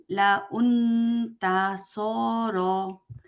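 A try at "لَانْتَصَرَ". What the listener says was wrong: লাউন কেন হলো? লাউন বললেন কেন?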